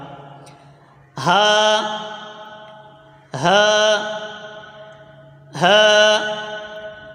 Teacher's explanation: हलक के नीचे वाले हिस्से से ह अदा होता है · حلق کے نیچے والے حصے سے ہا ادا ہوتا ہے